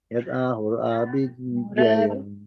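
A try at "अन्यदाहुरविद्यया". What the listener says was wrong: yeah this one it's in little bit nyat ahura vidyaya this yeah there is a lack of one syllable anyhow anyat ewa hurvidyaya nyat ahur avidyaya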